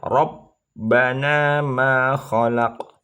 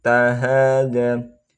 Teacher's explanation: qalqalah sugro karena qafnya sukunnya matinya asli